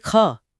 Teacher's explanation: एच जुड़ने का मतलब यह है कि एक्स्ट्रा हवा बाहर आ रही है। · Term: महाप्राण